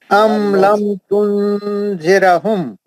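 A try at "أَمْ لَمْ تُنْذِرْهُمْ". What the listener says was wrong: जीराहुम नहीं है, वहां रा साकिन है, जीराहुम नहीं है वो।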